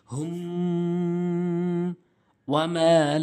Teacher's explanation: এই মিমটা যখন মিম সাকিনের পর আসবে তখন এই মিম সাকিনকে আমরা অবশ্যই গুন্না করব।